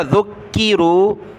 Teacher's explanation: ذال کو ملایا کاف کے ساتھ کاف کو سخت کیا